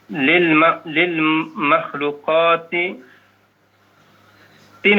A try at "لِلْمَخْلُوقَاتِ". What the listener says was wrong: Ti ada alif lamnya kan, lil itu ada alnya, nggak boleh ada tanwin. Lil makhluqati kulliha.